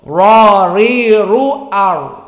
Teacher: Bertemu dengan al-hanak al-a'la dari gusi yang atas yang cembung, ra ri ru ar. Dan sifatnya perlu diketahui dia jahr, maka tidak bocor seperti hams